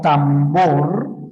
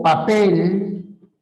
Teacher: una palabra como estas es aguda la mayor fuerza de voz está al final